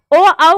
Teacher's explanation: ओ, औ कंठ और ओठ के माध्यम से बोले जाते हैं, इन्हें कंठोष्ठ कहा जाता है।